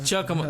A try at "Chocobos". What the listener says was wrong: You said Chocomos. It's Chocobos. Chocobos.